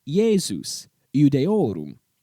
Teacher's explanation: this Y sound is a product of that initial letter I being smooshed up against another vowel sound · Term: consonental Y sound